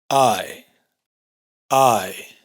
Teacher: Esto que parece una A y una E fundidas representa un diptongo que empieza con un sonido de A y se va cerrando hacia un sonido de I abierta